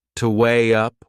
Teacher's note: We insert a little Y sound. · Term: linking sound